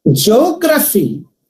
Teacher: the primary stress falls on the third syllable from the ending.